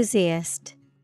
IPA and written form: ɪnˈθuːziæst (enthusiast)